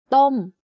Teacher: My pitch goes up and slightly down by the time I finish saying the word. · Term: falling tone